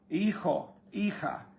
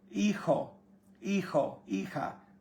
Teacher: J sounds like you're almost clearing your throat. Not quite, but almost. It's a guttural sound.